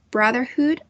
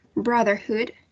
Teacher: And the stress syllable is the first one, brotherhood.